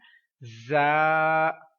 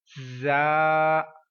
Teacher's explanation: سیٹی کی آواز والا حرف ہے، اس کو حروف صفیریہ کہتے ہیں